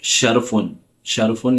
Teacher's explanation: شین کا مخرج ہے زبان کا بیچ اور اس کے مقابل اوپر کا تالو جس سے شین نکلتا ہے